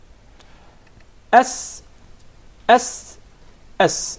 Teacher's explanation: the letter Sin comes from the tip of the tongue and the palates of the 2 front top incisors. S, S, S.